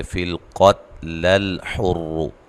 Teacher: اگر آپ اس کو ملا کے پڑھیں گے تو یہ جو حمزہ ہے یہ حمزہ وصلی ہے، یہ گر جائے گا